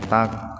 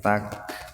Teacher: itu kafnya bukan qalqalah jangan takq tapi tak